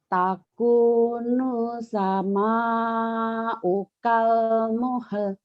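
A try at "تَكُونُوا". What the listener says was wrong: takunus. Tadi kedengarannya kayak bukan takunu ya bu ya. Takunus sama ukal muhal. Jadi bibir ibunya masih agak dimonyongin. Jangan dimonyongin biasa aja.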